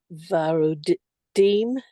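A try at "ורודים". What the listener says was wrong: One correction is that so male is varod, that perfectly. The other ones, the vav it loses the kamatz and it becomes v. So vruda, vrudim, vrudot.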